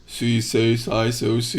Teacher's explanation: this s is getting really garbled it doesn't really even sound very distinct as like an S sound